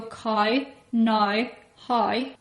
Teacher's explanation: While I, from the capital city, might say cow, now, how, in Northern Ireland they use a much smaller mouth